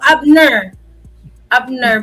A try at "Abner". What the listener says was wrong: the way the way you said that it sounded like you were saying bull bull something